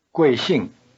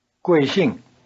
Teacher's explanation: Both syllables of 贵姓 have the falling tone.